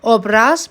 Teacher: Obraz, bir də ki, obraz. Vurğunun birinci hecada olmağı daha uyğundur tələffüz zamanı.